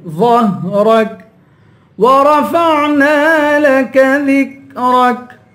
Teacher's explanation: ورفعنا را کو پر پڑھیں گے، عین کی آواز نکالیں گے. ورفعنا لك ذكرك، چھوٹا کاف ہے، یہاں پر چھوٹے کاف کی آواز نکالیں گے، باریک کریں گے.